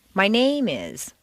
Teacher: if you stress name it sounds as if you're going to continue with more personal information